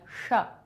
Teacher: हमारी टंग होती है, उसको पलट लीजिए पूरा, जैसे ही पलटेंगे और फिर शा की ध्वनि निकालिए तो वो जो गर्म हवा निकलती है वो ही श, उसको इस प्रकार से बोला जाता है श, ठीक है।